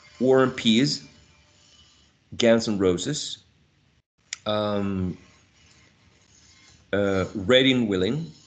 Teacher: there is an elision of the last consonant sound, d, absolutely. But the focus here of this lesson is that we're reducing a full vowel sound, in this case a trap, into a schwa.